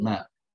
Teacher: Dia ada sengau, tapi pendek sebab dia tidak panjang, sebab dia tidak bertasydid, ya, ataupun ikhfa dan sebagainya. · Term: gunnah anqas